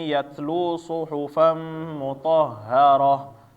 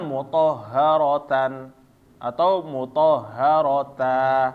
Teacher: ketika ta marbutoh maka dia bacaannya tetap berhenti menjadi ha ya